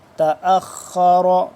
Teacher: خوا بھی موٹا را بھی موٹا